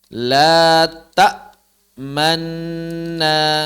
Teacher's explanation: yang pertama Nun disukunkan masuk ke dalam Nun harakat menjadi Manna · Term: diidghamkan